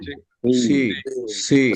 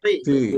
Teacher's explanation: সিনের ক্ষেত্রে মুখ গোল হয় না, সিনের ক্ষেত্রে মুখ স্বাভাবিক থাকে।